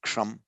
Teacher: the subdotted s is a sh, retroflex sh